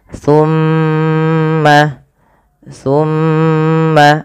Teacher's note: lafal mimnya ditahan jangan langsung di lepaskan